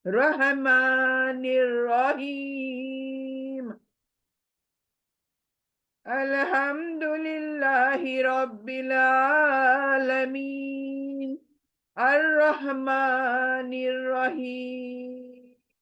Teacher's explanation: رو جو ہے عربک میں پور پڑھنا ہے، پور یعنی موٹا کر کے پڑھنا ہے،